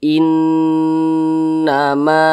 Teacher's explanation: cara bacanya itu digunahkan atau didengungkan jadi suaranya itu kita tahan kita panjangkan eah panjangnya itu 2 hingga 3 harakat atau kira-kira dua hingga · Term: ghunah musyaddadah